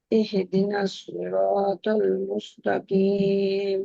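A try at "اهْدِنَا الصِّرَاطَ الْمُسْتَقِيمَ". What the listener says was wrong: না ইহ, ইহ, এখানে ইহি হয়ে যায়, আমাদের অনেক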